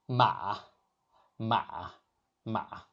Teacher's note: The pitch starts mid, dips low, then rises slightly like a valley shape. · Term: third tone